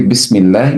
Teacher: If lam of Allah preceded by kasrah, we pronounce it light.